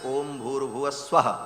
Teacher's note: है ओम भूह ओम भुवाह ओम स्वाहा ये तीन व्याह है तीनों को जब एक साथ उच्चारण किया जाता है तो ओम भूर भुव स्व ऐसा हो जाता है विसर्ग को र हो करके और फिर व र ऊपर चला जाता है तो भूर भुव